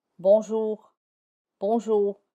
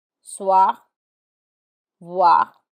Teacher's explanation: R is the final letter in a word. It is less audible and it sounds a bit dry. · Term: dry R